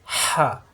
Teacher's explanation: প্রত্যেকবার কণ্ঠনালীর মাঝখানে চাপ সৃষ্টি হবে। হা হে হু হরকতের উচ্চারণ তাড়াতাড়ি দেরি করা যাবে না।